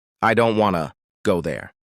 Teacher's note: Now the smaller words like I to there are said more softly or quickly. This rhythm gives English a natural music. · the important words in this sentence are stressed, are said strongly, don't go. Now, the smaller words like I to there are said more softly or quickly.